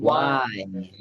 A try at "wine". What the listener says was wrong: I think that you could have moved your lips a little more in.